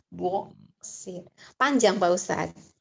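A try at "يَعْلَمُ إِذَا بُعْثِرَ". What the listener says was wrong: Pendek. Terus emang kamu orang Jawa gitu kan. Buksir. Ainnya ke K. Kayak Rasim sama Kasim aja buksir. Ya, tuh ain mati itu umumnya orang-orang Jawa tuh, tapi yang pinter mah orang Jawa juga banyak, Masya Allah ya.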